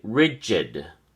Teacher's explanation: Rigid has two syllables, and the emphasis or stress is on the first syllable, ri. So we say rigid.